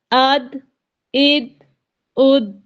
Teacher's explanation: یہاں دال پر قلقلہ کرنا ہے جنبش دے کر پڑھنا ہے